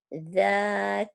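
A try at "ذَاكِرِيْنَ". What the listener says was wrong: Za, bukan ja, za, agak agak keras dikit. Za, za, heeh, ya. Za, za, bukan ja, za. kalau latennya DJ ya, DJ. Jadi ada unsur D-nya juga. Za, bukan za. Za. Kalau za roti titik ya, ini za.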